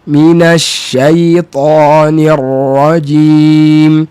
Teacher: huruf ra tu nak kena ada takrir